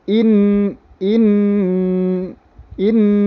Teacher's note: langsung getaran ke hidung kemudian kadar bacaannya adalah dua harokat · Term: dengung